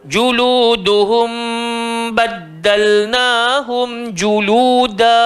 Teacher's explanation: mim mati bertemu ba, hukum dia ikhfa syafawi, kena dia dengung